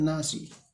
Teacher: এখানে আলিফ মাদ্দা হবে আলিফের টান দিকে জবর এসেছে টান হবে নুনের উপরে তাসদি এসছে নুন গুন্না হবে এক আলিফ পরিমাণ